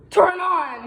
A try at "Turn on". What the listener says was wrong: No, deeper. You almost there. No, deeper.